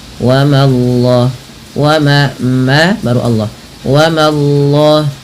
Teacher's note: Langsung Allahnya tebal tapi memanya tipis